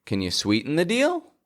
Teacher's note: If you're a fan of this show, then you may recognize that as the intonation of yes and no questions. Can you, Our voice rises up towards the end of the sentence.